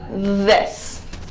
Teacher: this sound is made by putting your tongue in between your teeth